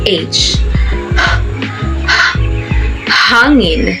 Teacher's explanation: Ang panghuli ay ang glutal. Ang babagtingang tinig ay nagdidiit o naglalapit at hinaharang o inaabala ang presyon ng papalabas na hininga upang lumikha ng paimpit o pasutsot na tunog.